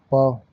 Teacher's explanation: प यह भाई ओष्ठ से बोली जाती है।